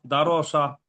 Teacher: রটাকে পুর মানে মুখটা গোল করে পড়তে হবে